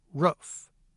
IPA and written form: ɹʊf (roof)